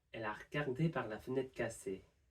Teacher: Regarder has one E sound in the middle, well, at the start, and this sound can go completely. Also, we have fenêtre, and this has an E sound itself, and also has an RE sound at the end, so we could drop both of those.